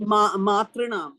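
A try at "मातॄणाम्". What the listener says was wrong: See, the rikara is twice. The r is twice it has been put. So it is dirgha.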